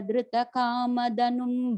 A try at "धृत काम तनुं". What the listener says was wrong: I think the last line is Dhrita Kama Tanum. Ta, not da.